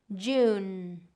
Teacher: make sure you're getting that completion where your tongue is touching the roof of your mouth for the N. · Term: ending N